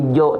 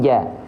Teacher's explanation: dibaca sesuai dengan dasarnya yaitu dengan vokal a tidak berubah menjadi vokal O ya maka dia adalah huruf yang tipis